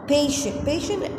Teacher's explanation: as a noun an adjective bone in both the cases where we have to put stress on the first syllable